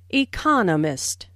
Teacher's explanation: There are 4 syllables in economist, with the stress on the second syllable